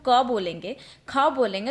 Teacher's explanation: जब हम क बोलेंगे, ख बोलेंगे, तो जो अधिक मात्रा में कंपन होगा वो हमारे कंठ में होगा। ख वर्ग की बात करें तो ये तालव्य यानी हमारे तालू से निकलता है, ठीक है, इसका उच्चारण हमारे तालू से निकलता है।